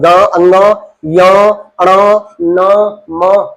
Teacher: ऐसे व्यंजन जिनके उच्चारण में मुख के साथ-साथ हवा नाक से भी निकले। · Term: नासिक्य व्यंजन